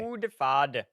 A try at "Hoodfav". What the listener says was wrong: It's a V. It's a Hoodfav OJ.